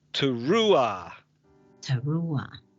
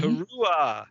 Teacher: There's no h there. It's at the h is after the vowel, so you don't hear it